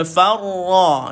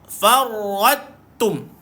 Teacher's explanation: Sabdu pada pada ra dia mesti kena ada getar, tapi jangan kuat. Minimumkan bunyi dia farra.